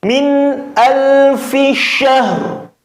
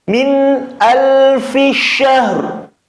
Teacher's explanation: Jadi ra-nya masih tetap kedengaran walaupun samar, memang harus dibaca samar.